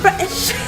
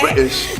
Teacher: you got this amazing glottal stop. That's a real Cockney trait to be able to say British.